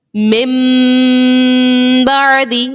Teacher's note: غنہ آپ اس میں کر رہے ہو, ناک میں آپ کی آواز جا رہی ہے, لیکن کس طرح غنہ کر رہے ہیں ہم, ہمارے ہونٹ بند ہو رہے ہیں